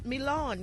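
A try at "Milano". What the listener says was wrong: You got to drag it out.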